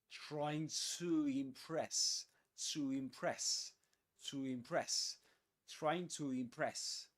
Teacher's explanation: The word to plus vowel sound right after it, without a pause in the middle, you get to impress her.